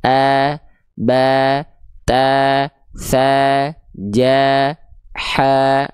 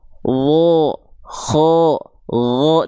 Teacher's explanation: Jadi bukan vokal A kalau huruf tebal, tapi kayak vokal O ya.